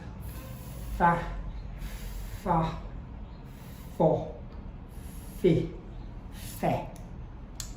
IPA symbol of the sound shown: f